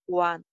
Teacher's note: want W sound lips ko round shape mein le jaake want isko V sound ke saath confuse nahi karna. Want ending T sound jo hai wo N ke saath aa jaane ki wajah se skip ho jayega.